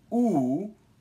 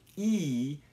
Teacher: criteria we need for determining speech sounds is lip rounding so with ooh your lips are round and with E you can see your lips spread out